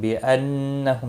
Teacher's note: نون مشدد پر غنہ ہوگا ، ہم میم ساکن کے بعد کیف آیا ہے، اظہار شفی